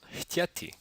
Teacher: the unvoiced glottal fricative h can stand in front of the plosive t